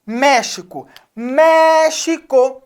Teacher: Então o me é a sílaba tônica está acentuada e árvore A árvore também está situada por quê